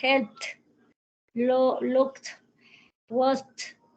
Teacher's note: ya va a sonar es como una T, pero voiceless es sin sonido, casi esa T no suena